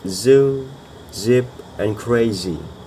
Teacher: vocal cords are engaged, creating a vibration